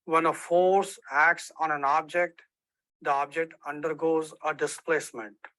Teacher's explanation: So in this example, the first thing you may notice that the way the prominence are produced for the Indian English speaker is a little bit different. So the speaker made a dip of volume at object to show the stress, and it corresponds to Pickering and Whitshire 2000 findings that Indian speakers produce prominence by a dip in pitch on prominent syllable where a pitch peak would be expected and irregular volume changes.